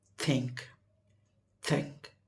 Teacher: So voiceless th pronunciation is th. You see, our tongue is in between upper and lower teeth. That is, you see, think, think, but in voiced, the, there is a vibration, but in voiceless th there is no vibration.